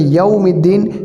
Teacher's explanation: یوم کے اندر آپ کے ہونٹ جو ہے وہ گول ہوں گے، کیونکہ اس کے اندر واو آیا ہے، واو جہاں بھی آئے گا وہاں ہونٹ گول ہوں گے۔